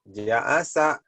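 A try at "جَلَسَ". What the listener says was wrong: nggak mungkin alif di tengah, Mas. Jalasa,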